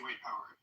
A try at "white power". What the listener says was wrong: You sounds like you're saying white poverty.